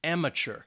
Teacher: professional this is a noun because we're talking about a person it's three syllables and the stress again is on that first syllable and that second syllable has that schwa sound